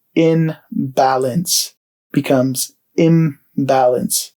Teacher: the N is assimilated to an M sound because of the B that follows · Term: assimilation